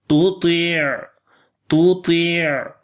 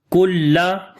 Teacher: kaf we read in light sound due to istifal quality